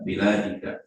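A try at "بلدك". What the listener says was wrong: baladika, bukan biladika, baladika. Baladi. Kan pendek kalau baladi mah kalau biladi itu panjang kan.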